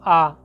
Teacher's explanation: आ आता है किसम विवृत में मात्र बड़ा आ आता है विवृत में बड़ा आ बोलने पर मुंह की जो आकृति है पूरी खुल जाती है